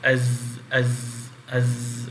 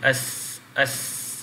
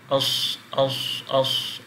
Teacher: Contoh kita baca zai, sin dan sad, kita akan bunyi seperti berdesir.